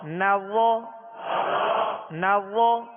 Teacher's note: ہونٹوں کو وا میں گول نہیں کریں گے ، وا حروف مستعلیہ میں سے اس کو پر پڑھیں گے،